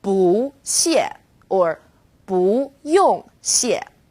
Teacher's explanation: When used on its own, 不 is fourth tone, 不. When 不 is used before another fourth tone, it becomes second tone, 不 谢 or 不 用 谢.